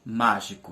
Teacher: mais forte a sílaba tônica é a antepenúltima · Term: proparoxítona